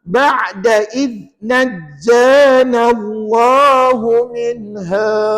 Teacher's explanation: Nak sebut dal, hujung lidah kita kena keluar sikit. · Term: dal mati